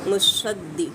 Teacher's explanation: मुसद्दी दाल को शिद्दत से अदा करेंगे